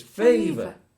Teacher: this first syllable has the stress and the second syllable is the schwa so it has a less syllable that's it it's favor it's